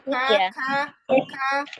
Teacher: kalau kaf kan ada hams-nya dia lebih maju.